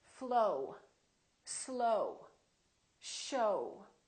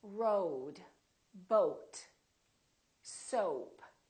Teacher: So it's actually two sounds, it's O and U together. So you have to move your mouth from O to U, O, O.